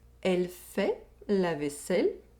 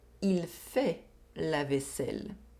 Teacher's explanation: We have the [ɛ] sound in the first sentence, and the [i] sound in the second sentence.